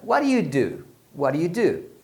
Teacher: Quando as pessoas falam rápido, geralmente esse what do you, eles vão pronunciar what you. Então fica what do you do?